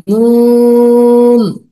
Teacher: জিহ্বার আগা তার বরাবর উপরের তালুর সঙ্গে লাগিয়ে